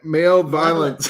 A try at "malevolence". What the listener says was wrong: malevolence. There's no I. Malevolence.